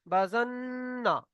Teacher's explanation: নুনের উপরে তাসদিদ এসছে, একালিফ পরিমাণ গুণনা করে পড়তে হবে